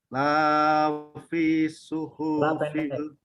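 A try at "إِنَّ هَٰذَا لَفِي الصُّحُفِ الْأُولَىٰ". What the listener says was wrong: La pendek. La fi suhufil ula.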